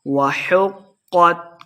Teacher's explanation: ہا کو قاف کے ساتھ ملا کے پڑھنا ہے، قاف کو موٹا پڑھیں گے، تا پہ ہم نے وقف کا دینا ہے۔